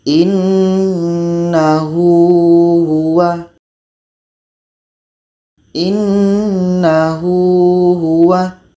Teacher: Setelah hadhamir bukan hamzah. Maka ini hukumnya maksilah qasirah. Dan ini dibaca 2 harakat.